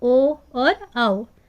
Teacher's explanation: ओ और आओ दोनों में हमारा कंठ और ओष्ठ यानी कि गला और होंठ दोनों का यूज हो रहा है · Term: कंठोष्ठ्य